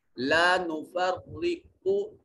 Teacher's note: क़ाफ हर्फ सिफ़त इस्तिअला की वजह से यहाँ मुफख्खम पढ़ा जाएगा।